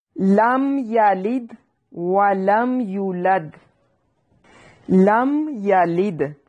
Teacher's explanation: یہاں میم کو ہلانا نہیں ہے، میم ساکن، یہاں پہ میم ساکن کا اظہار ہو رہا ہے، مطلب کہ غنہ نہیں کرنا، اخفا نہیں کرنا۔